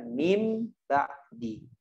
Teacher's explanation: Lebih tepatnya adalah satu huruf, yaitu huruf ba. Dibaca diganti nun menjadi mim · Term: iqlab